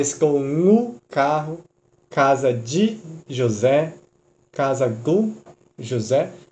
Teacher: Ele, na verdade, é tão fraco, esse do, ele é tão átono, sem tom, que na nossa linguagem, na nossa língua, a gente fala tu. Ele se reduz a um u, de tão fraco esse o é.